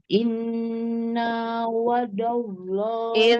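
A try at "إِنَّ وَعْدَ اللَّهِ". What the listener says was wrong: Innanya tidak panjang. Inna wa'dallah.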